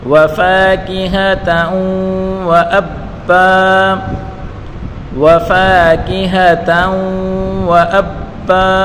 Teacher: با کے اوپر دو زبر کی تنوین ہے, تو وقف میں اس کو ایک زبر اور ایک الف کر کے پڑھیں گے